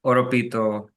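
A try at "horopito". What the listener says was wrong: you definitely you pronounce the H for sure.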